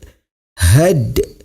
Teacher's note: hukum bacaannya adalah qalqalah sughra. Cara membacanya huruf dalnya sedikit dipantulkan.